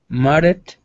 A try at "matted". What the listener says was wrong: Good. One more time.